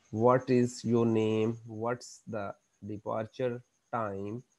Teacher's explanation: तो यहाँ पर आप देखें आपकी है rise fall intonation. First there is rise and then there is fall. ये देखें ग्राफिकल रिप्रेजेंटेशन है इसकी कि ये फर्स्ट राइज है देन फॉल है. · The pitch rises at the stressed syllable and then falls to low pitch. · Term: rise fall